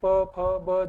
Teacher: ये होठ, दोनों होठ, तो इसको द्विओष्ठ्य भी बोलते हैं, क्योंकि प फ ब जब हम बोलते हैं तो दोनों होठ आपस में मिलते हैं, तो इसलिए इसको द्विओष्ठ्य भी बोलते हैं।